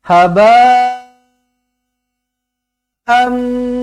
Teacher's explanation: tanwin bertemu dengan mim sabdu terus rapatkan bibir dengungkan dua harakat idgham Al ghunnah